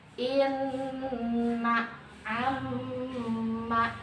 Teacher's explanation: yang bertasydid dibaca harus mantap masuk ke hidung, sehingga menahannya itu sekitar 3 harokat. Misalnya inna amma, ditahan sekitar 3 harokat, itu al-khayshum. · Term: gunnah